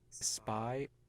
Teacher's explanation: we don't aspirate voiceless stops following an S, even if they are at the beginning of a stressed syllable